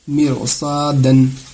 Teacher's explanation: رائے ساکنہ کے بعد حروف مستعلیہ میں سے صاد آ رہا ہے، اسی لیے اس کو پر کر کے موٹی آواز کے ساتھ پڑھیں گے